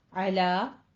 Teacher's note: اعلیٰ لام باریک رکھنا ہے